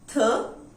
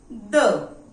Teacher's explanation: One is voiceless, that is th, and another one is voiced, that is the. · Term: TH sounds